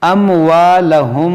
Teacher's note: یہاں پر ہوگا اخفاء شفوی، یعنی یہاں پر ہم غنہ کریں گے